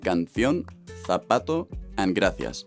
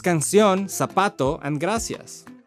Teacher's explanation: the th sound that many of my compatriotas use in words like canción, zapato, and gracias. Versus canción, zapato, and gracias.